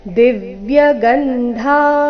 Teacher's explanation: ಧ ಮಹಾಪ್ರಾಣ ದೀರ್ಘ ಬರಬೇಕು